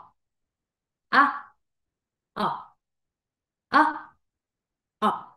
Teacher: dejas caer tu mandíbula abres como que fueras a decir una o pero tu sonido es una a